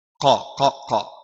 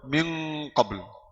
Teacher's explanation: Dari awal nun bertemu makhraj huruf yang selanjutnya. Qaf keluar dari mana? Pangkal lidah bertemu langit. Jadi qa. Dari awal nun bertemu makhraj ini.